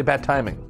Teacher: it's too difficult to connect a d and a t and say both together clearly